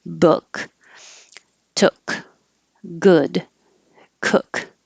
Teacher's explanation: the vowel is uh which is slightly lower than ooh